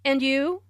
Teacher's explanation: notice the rising in intonation on and you